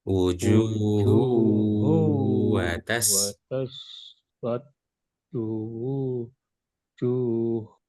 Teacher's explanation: Tanwin bertemu dengan huruf waw. Maka dibacanya langsung masuk ke huruf waw dan dibaca dengung. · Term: idgham bi gunnah